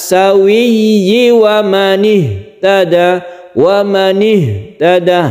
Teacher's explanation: Huruf 'h' juga berasal dari pangkal tenggorokan. Kemudian di bagian akhir hanya satu 'alif' , jangan terlalu panjang.